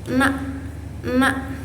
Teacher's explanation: huruf nun ini keluar dari ujung lidah dan gusi-gusi atas bersamaan dengan getaran hidung. Nah, sifat dia itu majhur.